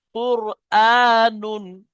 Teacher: এখানে যদি আপনি পড়েন কুর আনুন, কুর আনুন, এটা বারিক হয়ে যাবে, কুর, মুখ গোল করে কুর, যেহেতু র সাকিনের আগে পেশ এসছে, পুর হবে।